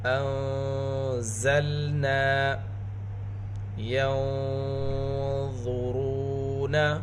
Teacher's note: نون ساکن کے بعد حروف اخفا میں سے ضا، یہاں پر اخفا کی آواز موٹی ہوگی